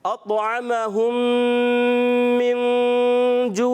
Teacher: मिन में भी यहाँ इख्फ़ा का कायदा, नून साकिन के बाद उर्फ़ इख्फ़ा में से जीम, तो इसमें क्या करेंगे, इसमें भी हम गुन्ना करेंगे, इख्फ़ा का गुन्ना करेंगे। · तो हम में मीम साकिन के बाद दूसरी मीम आने की वजह से यहाँ इदगाम शफ़ी का एक कायदा लगेगा, यानी गुन्ना करके पढ़ेंगे।